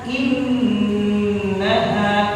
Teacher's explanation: Yang pertama di sini ada nun bertasydid gunnah. Jadi tahan innaha dak ditahan.